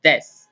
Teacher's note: When we say des or gozaimasu, the U part is silent.